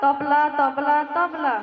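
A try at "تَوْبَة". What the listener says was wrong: দাদুজান, তবলা তবলা নেই, বলুন তওবা তওবা তওবা।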